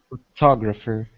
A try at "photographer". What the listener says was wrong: Okay, you're stressing the second one. Photographer.